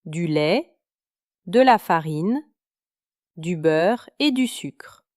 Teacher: une série de montées suivies d'une descente finale, comme dans une liste d'épicerie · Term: énumération